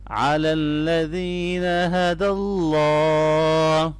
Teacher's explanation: اللہ کے نام کو یہاں موٹا کریں گے کیونکہ اس سے پہلے زبر آ رہی ہے